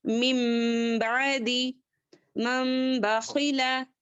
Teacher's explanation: نون کو چینج کر کر بدل کر میم کو لے کر پڑھیں گے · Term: اخلاب